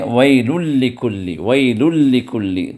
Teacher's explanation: ویل میں جو تنوین کی آواز ہے وہ آواز لام کے اندر داخل ہو گئی، ادغام ہو گیا، لیکن وہاں پر کوئی غنہ نہیں کیا گیا، تو یہی ادغام بغیر غنہ ہے، جو ویل لکل کے اندر بھی ہے، پھر ہمزۃ اللمزہ میں بھی ہے۔